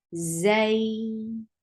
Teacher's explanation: This combination is Leen combination. You have to say it softly. You have to make it two counts long.